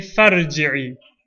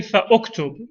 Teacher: the hamza is written, but it's not pronounced in the middle of a sentence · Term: hamzatul wasl